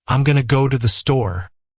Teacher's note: In fast, natural speech, going to becomes gonna. I am becomes I'm.